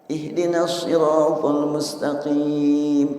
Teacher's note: huruf Shad adalah keluar udara dengan lepas ada bunyi jeritannya sedikit lidah naik sampai menutupi gusi